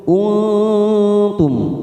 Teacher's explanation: kita samarkan nun sukun tiga ketuk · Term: Ikfa Hakiki